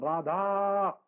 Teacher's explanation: वो जो बहुत लंबा उसका आ खींचते हो आप, वो प्लूत स्वर होता है